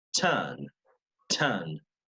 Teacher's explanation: we also have this thing that the British drop the R